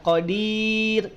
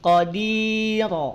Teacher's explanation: ujung lidah nempel dengan langit-langit kemudian hamparkan pangkal lidahnya ketika dihamparkan maka tidak akan terdengar menjadi tebal dia akan terdengar menjadi tipis